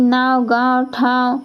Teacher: अनुनासिक उच्चारण में नाक और मुंह दोनों से ध्वनि निकलता है